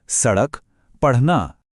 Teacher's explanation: जब हम ड़ या ढ़ बोलते हैं तो महसूस कीजिए कि जुबान कैसे बिजली की तेजी से ऊपर तालू को छूकर नीचे गिरती है, जैसे उसे सच में ऊपर फेंका गया हो। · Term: उत्क्षिप्त